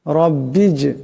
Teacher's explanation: ইব্রাহিমু এখানে বা সাকিন আওয়াজটা কলকলা হবে রব্বিজ এখানে জিম সাকিন জিম কলকলা হরফ আওয়াজটি কলকলা করিয়া পড়তে হবে